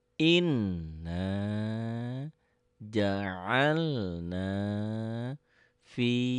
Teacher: Kalau ada tanda seperti ini double dan ditahan dan dengung, itu gunnah